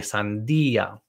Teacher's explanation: I want you to stress the I, sandía